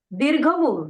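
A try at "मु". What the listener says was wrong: Mu. No, small U. Small U. Small U. No, no, small. small. Small.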